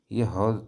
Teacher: ये ह आपके यहां पर जो स्वर यंत्र होता है वहां से निकलता है